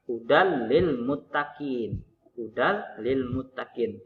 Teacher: Lam dan ro, maka dibaca tidak berdengung. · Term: idgham bila gunah